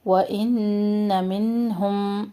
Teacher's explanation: نون ساکن کے بعد ہا اظہار کر رہے ہیں یہاں پہ